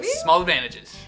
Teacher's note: O americano tira o T depois da nasal.